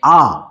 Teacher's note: এই স্রধ্বনি উচ্চারণের সময় জীভা ঠিক সামনের দিকেও যাচ্ছে না আবার পেছন দিকেও যাচ্ছে না।